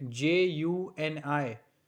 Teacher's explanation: the sound of J would change into Y. That means year.